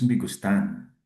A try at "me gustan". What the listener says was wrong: Hindi gustan, 'di ba? Yung nose rule natin, pag nagtatapos sa N, S or vowel, ang stress ay nasa second to the last syllable. Gustan. Hindi siya gustan. Not unless may asento sa A.